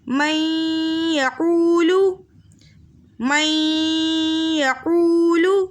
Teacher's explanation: نون ساکن کے بعد ینمو کے متحرک حرفوں میں سے یا آ رہا ہے تو 2 حرکت کی مقدار غنے کے ساتھ پڑھیں گے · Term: ادغام مع الغنہ